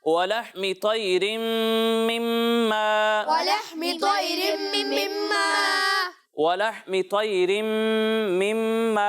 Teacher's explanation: तो इसे पुर पढ़ना है और इसके बाद ये भी ध्यान रहे कि यहाँ दोनों मीम में गुन्ना करना है और गुन्ना की मिकदार 1 अलिफ के बराबर है